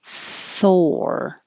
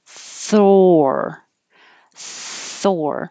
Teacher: So remember, Thor, your tongue is going from the TH immediately curling back for the R, and you have to round your lips like or, Thor. And it's almost two parts.